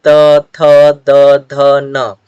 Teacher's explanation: अब हम लोग देखते हैं कि ये जो त वर्ग है वो दंत, जब हम इन त वर्ग के वर्णों का उच्चारण करेंगे तो जो हमारा जीभ है, जो हमारा टंग है, वो दांत से टच होता है, दांत से स्पर्श करता है, इसीलिए हम लोग इसको दंत स्पर्श वर्ण कहते हैं।